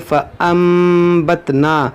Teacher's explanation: इस नून साकिन को इस मीम से बदल कर पढ़ेंगे, इसको पढ़ेंगे फ़अंबतना, इसको फ़अनबतना नहीं पढ़ेंगे। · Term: इक़लाब